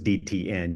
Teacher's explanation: got your top teeth here and the gum ridge above it is the tip of the tongue hitting the gum Ridge for DT and N so if you say those dtn you'll feel the tongue hit